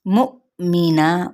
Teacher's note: یہ حمزہ جو ساکن ہے یہاں پہ ہم جھٹکا دیں گے